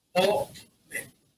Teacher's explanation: Questa scissione è sottolineata dal gioco metrico accentuativo, poiché i due monosillabi sono collocati in punta diverso, in decima e in undecima sede, questo produce una rima franta con ritrarsi dell'accento sulla prima sillaba · mentre in ome l'accento innaturale sottolinea lo spappolamento della parola in due tronconi